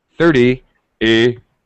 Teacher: 30 30 e. The second syllable, the pitch goes down and it's very fast.